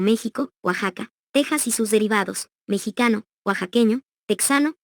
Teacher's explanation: La pronunciación de esta X, en esas y otras palabras, es fricativa velar sorda, es decir, suena como J